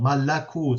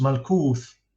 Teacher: Quran still has this a vowel, malakut, so it's 3 syllables, while in Syriac it's just malkuth, only 2 syllables. So that vowel has dropped out.